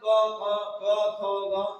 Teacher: ये कंठे से भी निकलता है, इसलिए कंठे होता है